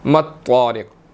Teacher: مطارق، تو موٹا ہے، اور اس کے بعد جو ہے وہ را کے نیچے زیر ہے، باریک پڑھی جائے گی، اور قاف جب ساکن ہوگا تو اس کو ہلا کر پڑھیں گے، قلقلہ ہوگا۔